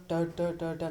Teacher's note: ನಾಲಿಗೆಯನ್ನು ಹಿಂದೆ ಚಾಚಿ ಬಾಯಿಯ ಮೇಲ್ಭಾಗವನ್ನು ಸ್ಪರ್ಶಿಸಿದಾಗ ಉಚ್ಚಾರಗೊಳ್ಳುವಂಥದ್ದನ್ನು ಟ ವರ್ಗದ ಅಕ್ಷರಗಳು ಅಂತ ಕರಿತೇವೆ. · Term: ಮೂರ್ಧನ್ಯ ಅಕ್ಷರಗಳು